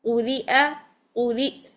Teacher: حمزہ کی آواز کو جب ہم نے ساکن کرنا ہوتا ہے تو حمزہ پر جھٹکا دے کر اس کی آواز بند کر دیتے ہیں